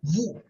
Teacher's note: Vous ends with S. Okay, so the S will be silent.